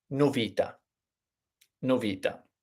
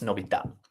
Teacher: the pattern is to put the emphasis on the penultimate syllable which would be the second syllable in this case we have